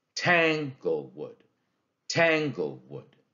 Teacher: you hear that the first syllable is stressed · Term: dactyl